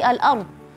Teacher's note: Kalau rnya mati maka kita lihat harakat sebelumnya seperti al-ard. Ra mati sebelumnya fathah kita baca tebal. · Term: ra tebal